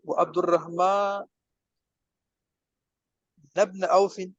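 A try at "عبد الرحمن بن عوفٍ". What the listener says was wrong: نہیں، اس کے نیچے تو زیر ہی آئے گی نا، یہ تو مضاف الیہ ہے۔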